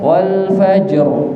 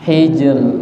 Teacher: ro sukun, ro waqaf, ro sukun, sebelumnya kasroh maka dibaca tipis